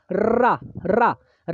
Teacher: रा को जैसे ही बोलेंगे दोस्तों आपकी जीभ पूरी तरह से लुंठित हो जाएगी। ठीक है, गोलाकार हो जाएगी।